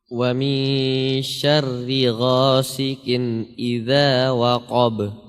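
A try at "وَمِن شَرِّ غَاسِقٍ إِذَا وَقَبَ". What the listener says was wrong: Ya, huruf qaf tebal atau tipis? Tebal ya. Jadi harus kita tebalkan. Ya, waqab harus tebal.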